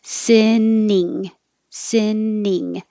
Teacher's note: So you have two different vowels. You have si, where it's a little lower, and then ing, you have the e as in eat.